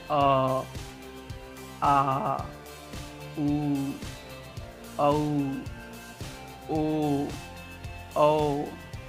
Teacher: पश्च स्वर दोस्तों जिह्वा के पश्च भाग से उच्चारित होता है, मतलब जीभ के पिछले भाग से उच्चारित होता है।